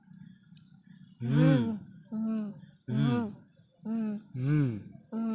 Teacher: No lip connection. You cannot connect your lips. It's v. There's a lot of vibration.